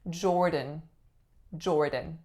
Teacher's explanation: it is combined via not a D sound but a flap sound because both are vowels